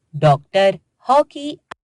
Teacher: औ की ध्वनि आ और ओ के बीच की है इसका प्रयोग केवल अंग्रेजी भाषा के शब्दों में ही किया जाता